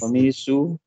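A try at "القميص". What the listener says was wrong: Nah, ini salah ya. Tidak ada tasydid di sini ya. Di al-qamisu. Ya, tidak ada tasydid. Al-qamisu.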